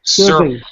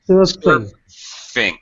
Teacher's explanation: What you're doing is you confuse me because you're voicing the sound, so that when you voice it, it's a V. When it's unvoiced, it's an F.